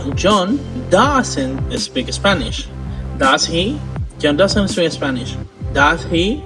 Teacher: question tag goes up it means you are not sure and you want to know the answer